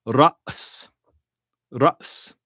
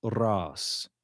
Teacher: in spoken Arabic, it becomes ras, just a long A vowel, ras. Okay?